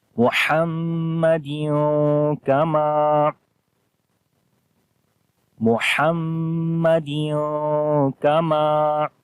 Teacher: میم کے اوپر شد ہے، غنہ کریں گے. دال کے نیچے دو زیر ہیں یعنی کہ تنوین آ گئی.